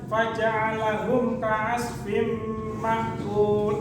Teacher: dari bacaan idgham bi gunnah yang cara membacanya berdengung dan ditasdidkan